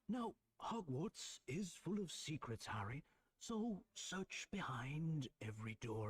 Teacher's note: he's got a soft, distinct Irish accent. That's why he does pronounce the r at the end. You know, or in the middle of words, like Hogwarts or uh search behind every door.